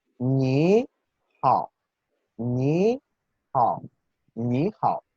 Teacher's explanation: Eso quiere decir que la primera sílaba va a pronunciarse ligeramente más aguda, más alta que la segunda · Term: segundo tono